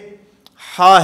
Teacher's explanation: وہ سانس جاری ہو رہا ہے، سانس بند نہیں ہو رہا